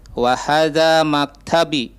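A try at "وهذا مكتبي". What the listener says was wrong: Nah, maktabi agak panjang B-nya.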